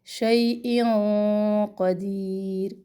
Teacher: کلی شیئن، شی یا لین، یہاں پر ہم موٹا اخفا کریں گے، آواز جو ناک میں جا رہی ہے نا، قاف موٹے حروف میں سے ہے تو ہماری زبان کی جڑیں بھی اوپر کو اٹھے گی اور اخفا بھی ہم موٹا کریں گے۔ شیئن قدیر، دی یا مدہ، اور را جب ساکن ہم یہاں پہ اس کو چھوڑیں گے تو باریک ہی ہوگی، یاد رکھیں را سے پہلے اگر یا ہو تو وہ را جب ہم ساکن کرتے ہیں تو اس کو بالکل باریکی سے چھوڑ دیتے ہیں۔